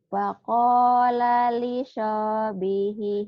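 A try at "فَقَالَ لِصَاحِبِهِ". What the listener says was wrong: Hibihi. Hinya ketinggalan. Tadi lanya ketinggalan. Sekarang hanya ketinggalan.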